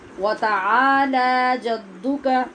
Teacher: یہاں دو حرف ہو گئے لمبے کرنے والے، عین اور لام. عین کے آگے الف ہے، لام کے اوپر کھڑی زبر ہے، دونوں کی آواز برابر ہوتی ہے